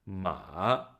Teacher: it falls and then Rises up to the mid high pitch